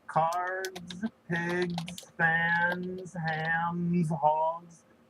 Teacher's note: ever noticed that actually not just some of the time that most of the time this supposed s is pronounced as Z